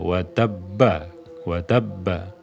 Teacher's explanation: jadi Tengah [Musik] ama jadi tidak terjadi Qalqalah Mengapa karena diwal ba pertamanya melebur dengan ba yang kedua